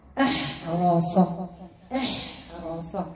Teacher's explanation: الهمزه مرققه الحاء مرققه الراء مفخمه والصاد مستيه مطبقه جماعه اح تقولوا احرس اح احرس احر نديروها